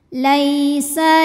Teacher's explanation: ada Ya Sukun didahului baris fathah maka dibacanya lembut